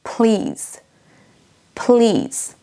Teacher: Et on a également un I long dans please, please. Vous entendez peut-être que je traîne légèrement.